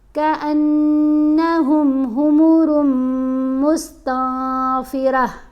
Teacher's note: را کو میم سے بھی غنہ کرتے ہوئے ملانا ہے اور یہاں پر نون کو واضح نہیں پڑھنا، اخفا کرنا ہے کأنہم حمر مستنفرہ۔